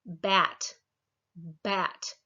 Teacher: There at the b, you can feel your vocal cords vibrating.